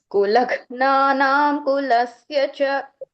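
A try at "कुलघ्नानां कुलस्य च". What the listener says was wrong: Here ing sound has to come. It is sounding it as im sound. Kulagnanam kulasya cha, ing sound.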